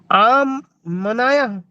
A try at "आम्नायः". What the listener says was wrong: एक साथ बोलिए ना, अलग अलग क्यों करना है?